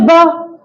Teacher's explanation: बकरी वाला जो ब होता है वो हमारे होठों से बोलता है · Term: ओष्ठ